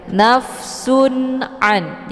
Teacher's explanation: Jadi izhar ini dibaca jelas, tidak boleh didengungkan, namun cukup ditekan saja. Nafsun an, jadi jelas bunyi n-nya, ya, bunyi tanwinnya.